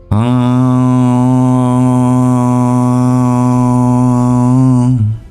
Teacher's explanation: A single sound, a nasalized labio-guttural vowel.